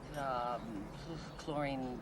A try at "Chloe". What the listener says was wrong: Chloe. You said chlorine. Her name's Chloe.